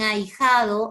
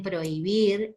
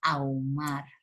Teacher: en ahijado es evidente que en ahí hay un diptongo, igual en prohibir, igual en ahumar.